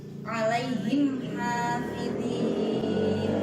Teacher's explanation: Di situ ada mim sukun alaihim, kemudian bertemu dengan huruf ha hafidhin, maka cara membacanya adalah mim sukun dibaca jelas dengan bibir tertutup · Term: idhar syafawi